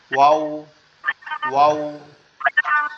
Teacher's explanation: ওয়াও এর উচ্চারণটা কিভাবে হবে, ঠোঁটটা একবারে গোল করে আওয়াজ হবে